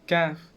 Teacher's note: Deepest part of the tongue with the end of the soft part beginning of the hard part in the roof of the mouth, this is kaf.